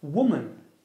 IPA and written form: 'wʊmən (woman)